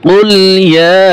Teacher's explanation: মদের হরকতের পরে লম্বা হামজা আসছে তাই এখানে 3 আলিফ টান হবে